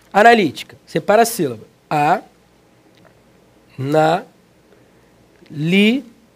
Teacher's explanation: Antepenúltima sílaba tônica, a palavra é proparoxítona.